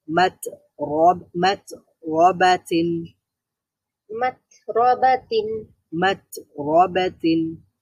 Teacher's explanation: তা সিদ্ধাতের হরফ। আওয়াজ বন্ধ হয়ে যাবে, কিন্তু বাতাস বের হবে।